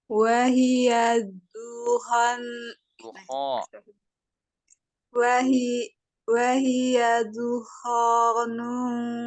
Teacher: Wahiyya tu nggak ada angin.